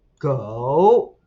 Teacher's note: it's got this dropping and rising tone